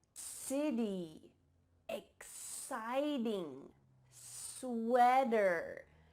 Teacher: The first way that you can sound more American is to change your T sounds to D sounds when they're between 2 vowels. · Here we have a T between 2 vowel sounds like I mentioned, and it's changing to a D. It's not a T sound.